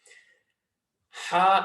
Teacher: top of the throat the closest part of the throat and ha comes from the middle of the throat